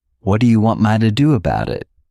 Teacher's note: All we're doing is we're not pushing out that T sound. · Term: flat T